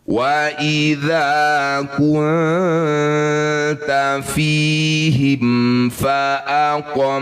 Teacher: bunyi mim sukun baca dengan jelas disebut bacaan izhar syafawi.